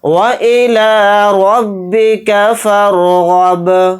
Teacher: गईन को बा साकिन के साथ मिलाकर पढ़ेंगे, गईन को यहाँ पर मोटा यानी पुर पढ़ेंगे, बा के ऊपर जज़म है तो बा के अंदर क़लक़ला भी करके पढ़ेंगे। हालत वक्फ में बा सेम साकिन होकर ही पढ़ा जाएगा।